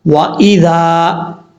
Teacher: یہاں پر ذال کے بعد جو الف ہے یہ الف مدہ ہے، ایک الف کی مقدار لمبا کر کے پڑھیں گے